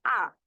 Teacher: আ ধ্বনি উচ্চারণের সময় ঠোঁট কিছুটা হচ্ছে গোলাকৃত হচ্ছে, আবার কিছুটা প্রসারিত হচ্ছে। এর জন্য আ ধ্বনি হচ্ছে অ্যাকচুয়ালি না গোলাকৃত না প্রসারিত, এটার মধ্যে যেটা হয় দুইটাই থাকে।